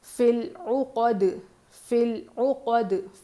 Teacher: فی العقد، فی العقد، فل نہیں کریں گے، فل، فا لام زیر فل، یہ بھی حروف قمری کا قاعدہ ہے، تو یہ الف نہیں پڑھیں گے، لام پڑھا جائے گا اور اس پر یا مدہ نہیں لگے گا، ٹھیک ہے. فا لام زیر فل، یہ یا ساکن نہیں ہے نا، فا لام زیر فل عقد، عین پیش عو، عین کی آواز حلق کے بیچ کے حصے سے.